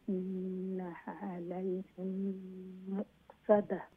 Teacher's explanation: ইদগাম শাফাওয়ি মিম রে ও দ্বিতীয় মিমের মধ্যে ঢুকাইমু, ইদগাম আর গুন্না সহিত আমরা পড়মু। তো ইন্নাহা আলাইহিম, হিম ও যে ইদগাম গুন্না সহিত হোকা।